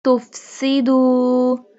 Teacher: Seen pronounced like a whistle sound